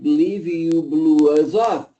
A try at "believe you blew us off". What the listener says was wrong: Us off. Get more S there.